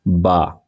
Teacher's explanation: दोनों होठों के तर हिस्सा से अदा होगा · बा हम अदा कर रहे हैं तो हमारे दोनों होठों का इस्तेमाल हो रहा है · با دونوں ہونٹوں کے تر حصہ سے ادا ہوگا